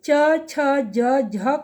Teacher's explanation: हमारी जीभ जो है तालु से स्पर्श करती है, यानी दांत के ऊपर वाले हिस्से से टच करती है। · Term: तालव्य